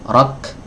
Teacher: ada hams di akhir rok mengalir nafasnya. Jadi dia syiddah iya.